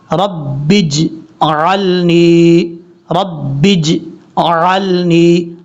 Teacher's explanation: आइन को क्लियर करके पढ़ना, हमज़ा नहीं पढ़ना। और यहाँ पर ये भी गलती करते हैं लोग, नून के बाद जो या है इसको छोड़ देते हैं, शॉर्टकट पढ़ लेते हैं।